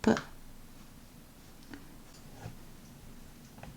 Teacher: P sounds like P in spin. Try to avoid a strong burst of air after the sound.